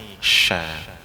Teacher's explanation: Kalau shin, permukaan lidahnya naik, sha.